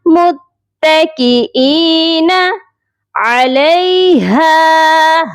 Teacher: ہا کی آواز سینے والے حلق سے آئے گی